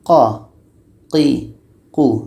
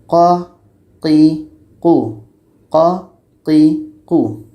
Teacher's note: Qa ini letaknya pada pangkal lidah menempel dengan daging dekat tonsil kita. Pangkal lidah menempel dengan daging dekat tonsil kita.